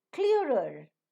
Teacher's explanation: Reader, you have the first r being pronounced and the last r not being pronounced. Clearer, the first r is pronounced and the second r is not pronounced